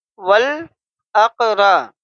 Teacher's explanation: را کے اوپر زبر ہے اس لیے را کو ہم پر پڑھیں گے، موٹا پڑھیں گے